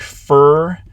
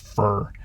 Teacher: i don't have a schwa like this in there i just have a syllabic er it's not far or something like that just fur so there's